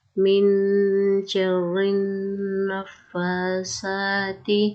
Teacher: کھڑی زبر کو ایک الف کے برابر کھڑا کریں گے اور نون کا شد ہو تو غنہ کریں گے